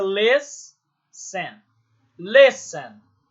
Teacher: O les é que é a sílaba tônica. Então, terminou em consoante, vogal, consoante, T-E-N, mas a sílaba tônica é o les e não o ten.